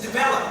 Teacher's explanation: it's the second syllable that you have to stress